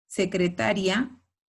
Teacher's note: Secretaria no lleva tilde porque la sílaba tónica es la penúltima. Y secretaría lleva tilde porque la vocal cerrada es tónica.